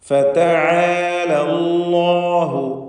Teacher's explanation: അല്ലാഹു എന്ന ഇസ്മുൽ ജലാലയിൽ ലാമിനെ തടിപ്പിക്കണം. തഫ്ഖീം ചെയ്ത് സ്വരഭാരത്തോടെ ലാമിനെ ഉച്ചരിക്കണം.